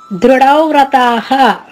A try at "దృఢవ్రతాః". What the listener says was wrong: అంతే, అక్కడ ఉండేది కూడా అంతే. మీరు చెప్పింది కరెక్టే.